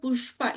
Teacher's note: In pushpa, sha is the murdhanya sha, shanmukha sha.